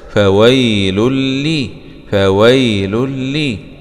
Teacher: لام ضمتين مع الإدغام بغنة في اللام المشددة مع الكسر